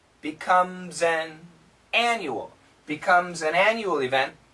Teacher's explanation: this word an, the perfect pronunciation, an, but the typical pronunciation, n.